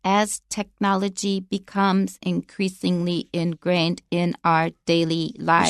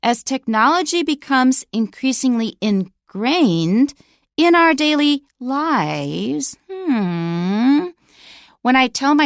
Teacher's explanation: And the continuation rise. So listen for the continuation rise when I read this sentence.